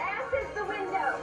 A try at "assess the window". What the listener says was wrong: It's assess the window. You put the wrong emphasis on the wrong syllable.